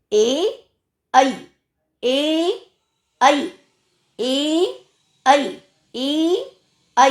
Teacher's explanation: तो जीभ जो है ऊपर के तालु को भी टच कर रही है और गले का भी उसमें प्रेशर जा रहा है। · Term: कंठ तालु